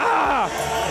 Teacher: You have too much vocal fry.